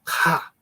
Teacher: that demonstration but you go deep into the guttural you know with a raspier sound produced in the throat